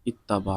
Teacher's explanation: دونوں ہم جنس ہیں اور پہلا ساکن ہے دوسرا متحرک ہے. یہاں ادغام کی شرط پائی گئی، تا کا تا میں ادغام کر دیا